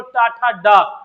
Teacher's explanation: तीसरा, अगर आप नहीं भी निकाल पा रहे तो सीधे ये बोलो टा ठा डा, डा में वाइब्रेशन मिला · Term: सघोष